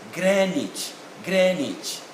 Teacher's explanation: the w is definitely not pronounced and the double e remains e in sound here